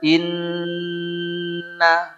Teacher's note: sambil bilang inna, hidung dipencet nggak mungkin bunyi. Nggak bisa bunyi, karena tempatnya di situ. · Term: gunnah